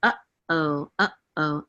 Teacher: they always say that Aleph is silent but Aleph is not really silent it's actually a guttural stop